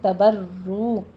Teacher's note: अल तबर्रू नून साकिन का कायदा अख्फा की करेंगे और बर्रू रा पर तशदीद है, सख्ती करते हुए, आगे उसकी तकरार भी होगी थोड़ी सी, और वाव मद्दा है, दोनों होंठों को गोल करते हुए अदा कीजिए, 2 काउंट करना है।